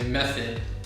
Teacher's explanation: the o in this case makes the schwa sound